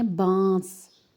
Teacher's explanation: جیسے ہم اردو میں بولتے ہیں بانس، اب یہاں پر دیکھیں نون لکھا ہوا ہے لیکن ہم نون کی آواز کو چھپا کر بول رہے ہیں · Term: اخوا